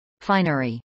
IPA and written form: ˈfaɪnɚi (finery)